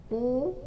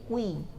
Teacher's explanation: Ki yang sudah bercampur dengan antara dammah dengan kasrah